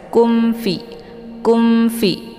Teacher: kemudian kungfu di sini ada mim sukun bertemu dengan huruf Fa mim sukun bertemu dengan huruf Fa adalah izhar syafawi jadi cara bacanya mim-nya dibaca jelas